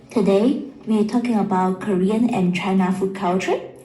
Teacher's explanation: It's going up, the tone is going up, and it shouldn't.